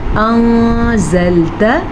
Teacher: انزلت، نون ساکن کے بعد زا ہے جو کہ حروف اخفا میں سے ہے، تو نون ساکن کو ہم نے چھپے ہوئے غنے کے ساتھ پڑھا